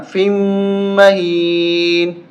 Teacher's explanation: تشدید کی وجہ سے فا کو میم کے ساتھ ملاتے ہوئے ہم نے سختی کے ساتھ زور دیا